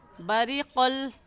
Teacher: तो ऐसे पढ़ेंगे फ़इज़ा बरिक़ल बसरु, बरी, इसमें ग़ा की नीचे ज़ेर है और ग़ा को बारीक करके पढ़ेंगे। बारीक करने का तरीका क्या, आपके दोनों होंठ फैल जाएंगे। ऐसे पढ़ेंगे बरिक़ल, क़ाफ़ मोटे हरूफ में से है, मोटा करके पढ़ेंगे बरिक़ल बसरु।